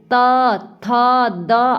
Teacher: आप देखेंगे कि आपकी जीभ जो है दांत को टच कर रही है तो यानी कि ये दंत वर्ण है